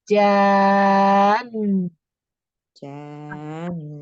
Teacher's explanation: ada nun bertasdid, jadi nunnya itu lebih ditahan lagi